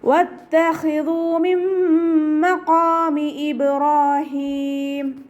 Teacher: ഖ ഇസ്തിഅലാൻ്റെ ലെറ്ററാണ്, ഉയർത്തി ഉച്ചരിക്കേണ്ട അക്ഷരങ്ങൾപ്പെട്ടതാണ്. സൗണ്ടിനെ ഹെവിയാക്കി കൊടുക്കുക കേട്ടോ.